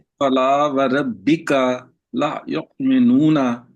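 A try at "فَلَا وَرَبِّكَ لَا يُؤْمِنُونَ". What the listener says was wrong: ला लंबा करें जरा। युमिनून।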